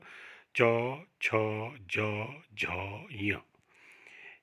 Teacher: जिह्वा का बीच का भाग तालु से टकराता है, तालु को छूता है, इसलिए इनको तालव्य कहा जाता है।